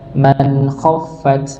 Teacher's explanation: nun sukun bertemu dengan huruf kha maka dibaca jelas.